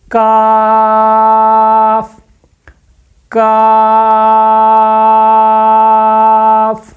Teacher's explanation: जुबान की जड़ ऊपर तालू के सख्त हिस्से तालू का जो सख्त हिस्सा है वहां पे लगे। लेकिन इसको बारीक अदा करना है। मोटा नहीं करना। · زبان کی جڑ اوپر تالو کے سخت حصے، تالو کا جو سخت حصہ ہے وہاں پہ لگے، لیکن اس کو باریک ادا کرنا ہے، موٹا نہیں کرنا۔